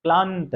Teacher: न के पहले वाले जो ध्वनि है ल के ऊपर बल दिया जा रहा है, बलाघात किया जा रहा है। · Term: संपृक्त ध्वनि